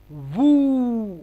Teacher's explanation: ওয়াও ওয়াও পেশ উ না হয়ে দুই ঠোঁট ভু